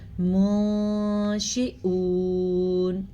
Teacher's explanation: ایک دفعہ پھر غور سے سنیں، جب نون ساکن کے بعد یا تنوین کے بعد حروف اخفا میں سے کوئی حرف آ جائے تو نون ساکن یا تنوین کی آواز کو چھپا کے پڑھتے ہیں اور غنّے کے ساتھ پڑھتے ہیں. یہاں پہ بھی ہم نے اس کو چھپایا اور ساتھ میں غنّہ بھی کیا.